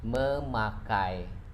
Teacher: And then P, pakai, we add prefix me, becoming memakai. Here we can see that we omitted P sounds from the words pakai.